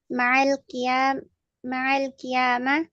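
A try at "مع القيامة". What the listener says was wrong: Setelah kata ma'a kasrah ya.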